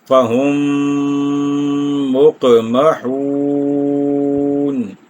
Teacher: میم ساکن، اور مقمحون کے شروع میں میم متحرک، تو ادغام شفوی ہو جائے گا، یعنی یہاں پر 1 الف یا 2 حرکات کی مقدار ٹھہر کر آگے چلیں گے